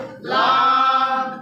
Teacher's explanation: 8 নম্বর মাখরাজ জিহ্বার আগার কিনারা, সামনের উপরে দাঁতের মাড়ির সঙ্গে লাগিয়ে লাম।